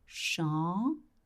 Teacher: Then you don't pronounce the M.